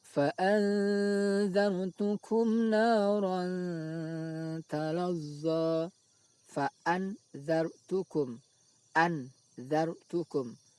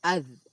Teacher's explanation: suara nun sukun dibaca ikhfa, yaitu samar, tidak dibaca izhar jelas. An juga tidak dibaca idgham, langsung masuk ke huruf dzal.